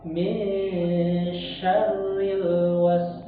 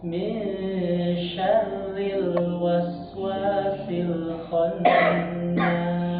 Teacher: Ketika bertemu dengan huruf ro, min syarril was. Di situ huruf ro-nya dibaca tarkib, Pak, karena dia berharokat kasroh.